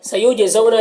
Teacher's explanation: جیم میں قلقلہ ہو رہا ہے، زو میں واؤلین سے نرم آواز کے ساتھ جلد پڑھیں گے